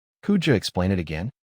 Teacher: Could you becomes could ya, and explain it links as explain it. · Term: connected speech